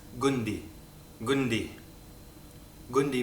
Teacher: in Egyptian gim is pronounced as a g a g very rarely if ever as a du only in